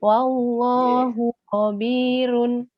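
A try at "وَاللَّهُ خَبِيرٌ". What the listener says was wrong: Kho-nya kurang ngorok. Kho.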